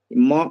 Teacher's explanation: म अनुनासिक है क्योंकि मुख और नासिका दोनों मिलकर के उच्चारित होता है इसका यम गणना नाम नासिका च य गण न इतने वर्ण का स्थान क्या होता है नासिका भी होता है और अपने अपने उच्चारण स्थान भी होते हैं अलग-अलग तो म का दो स्थान है ओष्ठ भी और नासिका भी है।